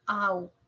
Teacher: Un diptongo. Au. Suena más la A.